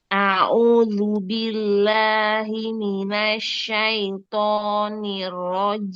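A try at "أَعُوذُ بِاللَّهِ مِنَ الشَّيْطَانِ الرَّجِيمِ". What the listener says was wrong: Linnya jangan masuk hidung. A'udzu billahi minasyaitonir rajim.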